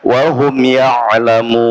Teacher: mim sukun ketemu ya, izhar syafawi. Jadi cukup dirapatkan kemudian pindah ke ya.